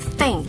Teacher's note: That's a voiceless th